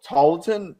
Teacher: It's almost like it's a silent L.